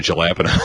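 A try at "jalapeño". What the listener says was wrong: Well, you didn't put an accent on it, though. Yeah, you got to talk with your hands so that it's...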